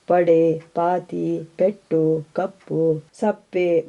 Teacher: 2 ತುಟಿಗಳನ್ನು ಒಟ್ಟು ಸೇರಿಸಿ ಉಸಿರನ್ನೊಮ್ಮೆ ತಡೆ ಹಿಡಿದು ಒಟ್ಟಾಗಿ ಪ ಎಂಬ ಉಲಿ ಹೊರಡುತ್ತದೆ.